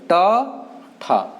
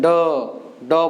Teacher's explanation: तो आप बोलेंगे ट ठ, कंपन नहीं हुआ कुछ, लेकिन ड ड बोलेंगे कंपन हो गया, ढ कंपन हो गया, अड़ा कंपन हो गया।